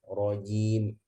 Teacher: Nah, pertama rojimnya, jimnya ya, jangan kayak cek ya, jangan hamas rojim, roji, ja. Jimnya itu harus jahar. Ya, jim itu ya kuat secara suara ya.